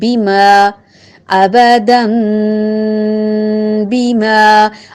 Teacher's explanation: بے نہیں پڑھیں گے، مجہول نہیں پڑھیں گے. ما ایک الف کے برابر لمبا، آواز کو ناک میں نہیں لے جائیں گے، ماں نہیں کریں گے، اور ٹیڑھا نہیں پڑھیں گے، میں نہیں کریں گے. · متحرک ہے، لمبا نہیں ہوگا. با کا مخرج ٹھیک سے ادا کر کے دونوں ہونٹوں کے تر حصے کو ملاتے ہوئے، لمبا نہ کرتے ہوئے